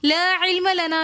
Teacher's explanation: لا علم لنا میں بھی لا کے ساتھ الف مدہ ہے تو لا ہم ایک الف کی مقدار کھینچ کر پڑھیں گے۔ لا علم لنا میں مد منفصل ہو رہی ہے تو اس وجہ سے ہم اس کو 3 الف کی مقدار کھینچ کر پڑھیں گے۔